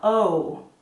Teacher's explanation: the letter O is similar to the O in English but watch how when I say the letter O my mouth gets smaller at the end of it